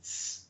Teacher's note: hacemos uso de dos sonidos, uno gutural k, más uno sibilante, ts, que juntos suena x. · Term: doble gutural